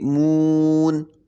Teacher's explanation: واو پہ ہونٹ گول کریں گے